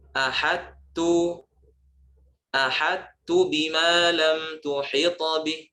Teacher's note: cara membacanya yang benar adalah dengan menjelaskan sifat itbaq pada kata tersebut